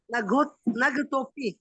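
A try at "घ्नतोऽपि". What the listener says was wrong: हाँ, घ्नतोपी, घ पूरा न तोपी, घ्नतोपी। न पहले मत बोलो, न बाद में बोलना है, पहले घ बोलना है। न तोपी, न तोपी। हाँ, घ्नतोपी, पहले आधा घ, फिर न, फिर तोपी, घ्नतोपी।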